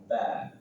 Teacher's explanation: Ba sama dengan mim, dua bibir dipertemukan dan dirapatkan. Ba. Dan dia termasuk huruf tarqiq tipis, maka ditipiskan, jangan ba tipiskan.